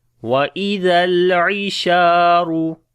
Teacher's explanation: Sheen we long due to alif madda. And on the ra we read in heavy sound